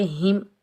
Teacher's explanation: हा को हम सीने से अदा करेंगे।